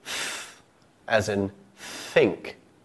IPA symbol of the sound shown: θ